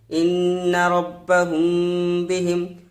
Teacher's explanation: নুনের উপর তাসদিদ আছে, এই জন্য নুনটাকে গুণনা করে পড়বো